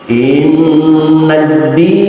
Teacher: Berbeda dengan tasdid yang ada di atas huruf selain nun dan mim, semacam tasdid yang ada di atas huruf dal, innadi, tidak berlaku gunnah musyaddada, hanya penekanan sekilas saja.